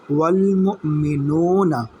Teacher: نون واو پیش نو کو ایک الف کے برابر کھینچیں گے